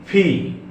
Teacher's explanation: দুই ঠোঁটের মাঝখান থেকে ফ উচ্চারিত হবে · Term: ফা সাউন্ড